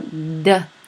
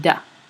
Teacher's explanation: So remember, dentalized is for an alveolar production. Instead of making tongue contact with your alveolar ridge, your tongue actually moves a little bit further forward and makes contact with your teeth, your dentition, and so it makes it dentalized.